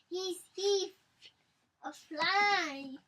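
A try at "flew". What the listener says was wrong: Not fly. It's flu. Do you know what letter this is? Oh, it's a U. U.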